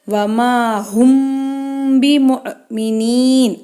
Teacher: ஹம்ஸா மேலே சுக்குன் வந்திருக்கு, அதனால் அதை அசைச்சு உச்சரிக்கணும்.